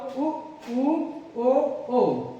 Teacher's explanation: उसके बाद आपके पास समृद्ध स्वर कौन से होते हैं, समृद्ध स्वर वो होते हैं जब आप इनका उच्चारण करते हैं तो इनका उच्चारण करते जो आपके होंठ होते हैं वो गोल आकार के हो जाते हैं